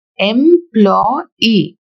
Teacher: The words like employee, we have 3 syllables. The stress will fall on the last syllable e.